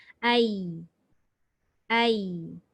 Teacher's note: Dia tidak ada angin pula macam shin. Ya dengan shin sama naik tengah lidah tapi tak melekat. Tapi ya ini tidak ada angin.